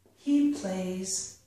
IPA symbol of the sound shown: z